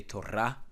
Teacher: the stress lays on the last syllable rah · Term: tone syllable